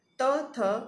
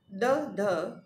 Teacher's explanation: ત, થ અઘોષ, દ, ધ ઘોષ, તેમજ ત અને દ અલ્પપ્રાણ વ્યંજનો છે, તેમજ થ અને ધ એ મહાપ્રાણ વ્યંજનો છે.